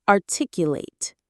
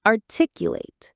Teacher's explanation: When it's a verb, an action word, the stress is on the 2nd syllable and the end sounds like ate.